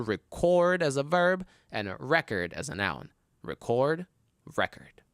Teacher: If it's a verb, you put the stress on the second syllable. If it's a noun, you put the stress on the first syllable.